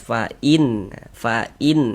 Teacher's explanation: berbunyi jelas nunnya tuh. Kemudian tidak didengungkan. · Karena dia izhar maka dibaca jelas dan tidak berdengung.